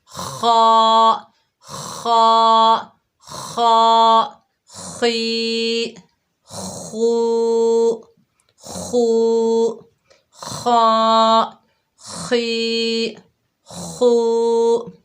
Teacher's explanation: جب ہم خا کو ادا کریں گے تو اس کی آواز کو کھردرا کریں گے